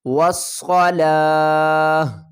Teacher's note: وقف کی صورت میں ہا کو ساکن کریں گے اور لام کو کھینچ کر ہا کے ساتھ ملا دیں گے